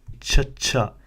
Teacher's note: Now, if it helps you remember, just remember that it's the previous consonant but aspirated. So you can imagine it to be like a CH with an extra H sound to show the extra airflow whilst reciting this letter.